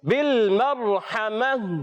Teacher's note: ہا کی ادائیگی حلق کے درمیان والے حصے سے